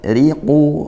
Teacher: Riqu ra-nya kasrah tipiskan ya tarqiq